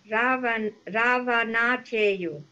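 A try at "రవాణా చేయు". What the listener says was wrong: It is almost correct and the only problem with vowel sound duration. The first letter. First letter. Ravana cheyu. Ravana cheyu.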